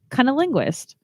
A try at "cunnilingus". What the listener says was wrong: No, there's no S. There's no T at the. It's cunnilingus. Like Colonel Angus. Say Colonel Angus.